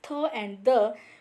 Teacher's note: called dental when we pronounce the sound of though and the we can examine the blade of the tongue is touching to the upper teeth